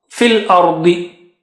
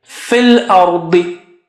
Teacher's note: Da is very thick and high. Fil ardi. Ra is also thick.